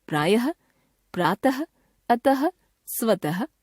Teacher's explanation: हिंदी में उच्चारण के स्तर पर प्रातः तथा सुबह की अंतिम व्यंजन ध्वनि के उच्चारण में कोई अंतर नहीं रह गया है · हिंदी में विसर्ग का उच्चारण समाप्त हो चुका है, इसे भी सब लोग ह के रूप में ही बोलते हैं।